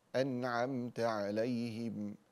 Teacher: صراط الذين أنعمت عليهم، أنعمت هنا فيها باب الميم وباب النون، فباب النون في أنعمت نون ساكنة وبعدها حرف العين، هذا إظهار حلقي، والميم بعدها التاء أنعمت هذا إظهار شفوي، فتظهر النون وتظهر الميم، لكن ننتبه إلى أن الإظهار ليس بغنة، فنقول أنعمت عليهم.